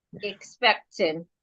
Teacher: Okay, correct. We're stressing the PEC.